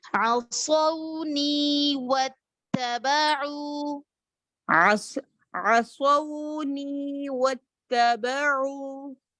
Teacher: عصوني, نی کو 2 کاؤنٹس کھینچیں گے نا, صوت صفیر استعلاء مکمل.